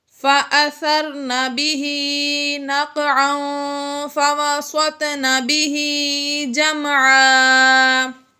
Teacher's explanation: یہاں پر بھی تنوین کے بعد فا آ گیا تھا، اس لیے ہم نے یہاں پر اخفا کیا، یعنی غنہ کر کے پڑھا۔ فَوَسَطْنَ، تو حروف قلقلہ میں سے ہے اور یہ ساکن ہے، اس لیے ہم نے اس کو جنبش دے کے پڑھا۔